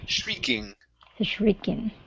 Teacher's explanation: shrieking long e sound instead of striking